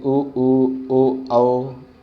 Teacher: ऐसे स्वर जिनका उच्चारण में होठों का आकार गोल होता है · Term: वृत्ताकार स्वर